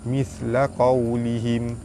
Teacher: hukum dia mad lin dibaca dengan lembut dan panjang 2 harakat